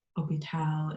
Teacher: there's no glottal pronunciation of the h um it is silent